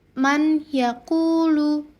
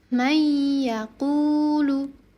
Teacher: karena nun sukun bertemu dengan huruf ya, maka dileburkan atau digabung. Dibacanya menjadi may yaquulu. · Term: idgham bighunah, idgham bi gunnah